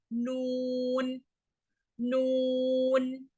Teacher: நுனி நாக்கை, அதே நுனி நாக்க மேற்பற்களின் ஈறுகளுக்கு சற்று மேலே தொடும். ரொம்ப பெரிய டிஃபரன்ஸ் எல்லாம் கிடையாது, சத்தம் தான் வித்தியாசப்படுதே தவிர அந்த தொடக்கூடிய இடங்கள்லாம் பாத்தீங்கன்னா ஆல்மோஸ்ட் சேம் தான்.